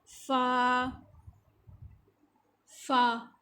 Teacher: غین یہ ادنی حلق سے منہ کا جو منہ کی طرف والا ہوتا ہے حلق کا حصہ وہاں سے. فا فا اوپر کے جو سامنے کے دانت ہیں ان کا سرا اور نیچے کے ہونٹ کا درمیانی حصے کے ساتھ جب وہ ٹچ ہوگا تو فا فا ادا ہوگا. نیکسٹ ہے قاف جس کو ہم نے پر بھی پڑھنا ہے.